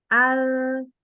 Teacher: Nah, hembusan nafas tentu nggak ada. Al, ya nggak keluar udara.